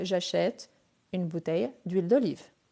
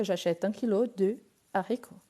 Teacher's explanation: Il s'agit d'un H aspiré, donc le D ne fait pas d'élision ni de liaison.